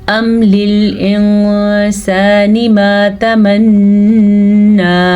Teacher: मीम पे जज़म था तो हमने कोई गुन्ना नहीं किया, कोई हम ठहरे नहीं है, क्योंकि यहाँ पे ठहरने का कोई कानून, कोई कायदा नहीं है।